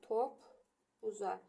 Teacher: Qoşa p-lardan yenə olduğu kimi birinci qalır, ikincisi çevrilir cinciltili qarşılığına.